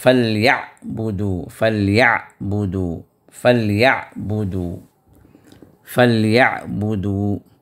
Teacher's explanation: عین کا جو حرف ہے اس کو وسط حلق سے ادا کرنا ہے